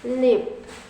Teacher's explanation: This manner of articulation produces consonant sound by contacting the tip of the tongue onto the alveolar ridge so that the air passes through both sides of the tongue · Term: Laterals